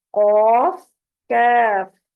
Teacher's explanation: कॉफ जुबान के पिछले हिस्से को ऊपर के तालु से लगाने पर मोटी आवाज में कॉफ अदा होता है। कॉफ जो है ऊपर तालु का जो नर्म हिस्सा है गले की तरफ, वहां पर ये जुबान की जड़ लगेगी, तो कॉफ मोटी आवाज में करके इसको अदा करेंगे। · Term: कॉफ और कैफ